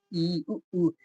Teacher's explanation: जिनका उच्चारण करते समय मुख ना के बराबर खुलता है अर्थात लगभग बंद ही रहता है उसको संवृत्त स्वर कहते हैं। · इसमें आपका मुख जो है वो खुल ही नहीं रहा है।